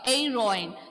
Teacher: I am not pronouncing H here. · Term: H is silent